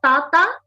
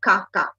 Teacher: another error pattern is there is backing but backing within the oral cavity so a Tata can become a Kaka